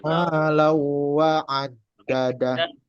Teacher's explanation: tanwin ketemu huruf waw, itu hukum bacaan idgham bi gunnah dengan dengung